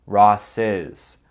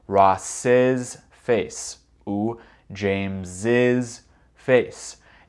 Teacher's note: pour les mots qui sont singuliers, qui terminent avec S, on prononce le S après le dernier S. Par exemple, Ross's avec un son Z.